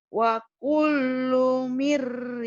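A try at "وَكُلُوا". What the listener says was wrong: wakulu nggak ada tasdid. Wakulu.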